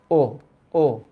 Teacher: অ এর উচ্চারণ যখন মুখটা একটু বন্ধ হয়ে আসে, সংবৃত মানে ঢাকা। ও ও, দেখো মুখটা একদম বন্ধ হয়ে আসছে।